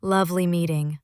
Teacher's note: If the stress lands on lovely, as in lovely meeting, with a flat tone, it might flip to ironic.